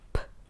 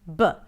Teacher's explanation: The P and B are pairs. They're actually produced in the same manner, but one is voiceless, P, and the other one is voiced, B.